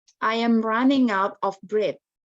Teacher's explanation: ada kayak letupan nafas waktu bilang breath